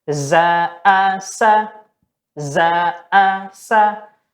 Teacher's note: ketika berada di huruf terakhir, seperti misalkan za'asa, maka langsung kita pendekkan gitu ya.